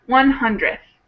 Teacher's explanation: you kind of don't pronounce that last d. Sometimes people do, but most of the time it just gets squished into the th sound.